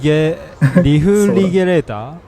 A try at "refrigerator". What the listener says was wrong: It's like everyone just pronouncing like G sound instead of J sound. Accent his I think he just put the emphasis in the wrong spot.